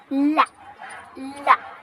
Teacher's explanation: तो जब हम ला बोलते हैं ला, तो हमारी जो जीभ है वो ऊपर तालू को टच कर रही है और इधर उधर से हमारे हवा निकल रही है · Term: पार्श्विक